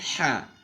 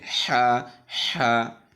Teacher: তো এই ঢাকনাটা শ্বাসনালীর সাথে লেগে কন্ঠের হলকের মাঝখান জায়গাটা ওটা কন্ঠলের সঙ্গে লেগে চেপে আসবে এখান থেকে উচ্চারিত হবে